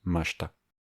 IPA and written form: maɕta (ました)